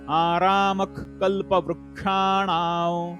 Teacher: विसर्गाच्या समोर क हे अक्षर आहे त्यामुळे विसर्गाचा उच्चार ख मध्ये